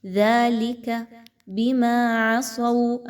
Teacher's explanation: ذَلِكَ بِمَا عَصَوْا، اب اس میں دیکھیں تو صاد ہے، صاد حروف مستعلیہ میں سے ہے، پر پڑھا جائے گا، اور اس کے بعد واو کا حرف آ رہا ہے، یعنی آپ نے یہاں پر اچھے طریقے سے غنہ کرنا ہے۔